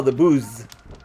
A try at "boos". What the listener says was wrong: No, you said booze again.